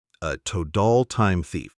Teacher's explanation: In natural speech, total often sounds like total with a D sound in the middle.